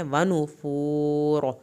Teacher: یہاں پر پیش پہ ہونٹوں کو گول کریں گے اور آخر میں را کو پر کر کے پڑھنا ہے